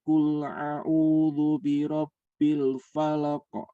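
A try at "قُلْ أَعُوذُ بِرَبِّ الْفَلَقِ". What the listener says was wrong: Tapi itlaqnya belum sempurna ya. Ahadum bismillah. Kemudian qul a'u. Hati-hati hamzah dan ain walaupun berdekatan makhrajnya.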